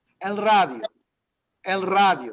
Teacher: Notice how I'm rolling that R at the beginning, right?